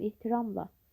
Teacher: Ehtiramla vurğu 3-cü hecadadır.